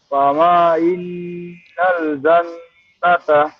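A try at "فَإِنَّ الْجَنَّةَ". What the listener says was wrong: ফাইন, ফামা হবে না, ফাইন, কিন্তু মিম নাই। ফাইন্নাল জান্নাতা,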